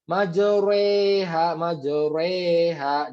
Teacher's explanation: Jadi dia itu e-nya tercipta dari fathah dijatuhkan ke kasroh. · yang benar adalah dia condong ya tadi miring dimiringkan huruf yang Fatah dimiringkan ke kasrah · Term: imalah